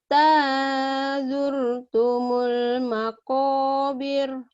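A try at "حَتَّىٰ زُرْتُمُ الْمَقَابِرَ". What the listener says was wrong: Kenapa nggak panjang? Kenapa nggak apa? Maqabir. Kenapa nggak panjang? Kan ini ada matobi'i. Ini ada matobi'i. Komnya matobi'i panjang. Tapi birnya pendek.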